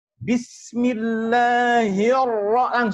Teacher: langsung ra-nya langsung tebal